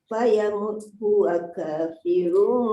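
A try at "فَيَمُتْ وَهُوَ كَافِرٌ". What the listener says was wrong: Fayamut wa huwa. Waw tertinggal. Wa huwa ka.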